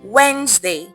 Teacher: The D and ES disappears.